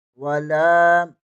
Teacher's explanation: واو کو مخرج ادا کرتے ہوئے ہونٹ گول ہونا چاہیے۔ لام زبر کے آگے الف مدہ ہے، اسے ایک الف کے برابر کھینچ کر پڑھیں گے۔